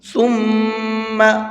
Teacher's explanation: اس میم کے اندر غنہ کر کے پڑھیں گے، اس لیے کہ میم پر تشدید ہوتی ہے تو غنہ کرتے ہیں۔ ثم، اس طرح سے ناک میں آواز کو چھپا کر کے پڑھیں گے۔